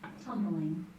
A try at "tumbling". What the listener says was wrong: Just two syllables in it, not tumbling, but just two syllables.